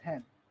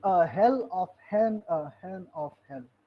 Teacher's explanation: Milton pronounced heaven not as heaven but as hen.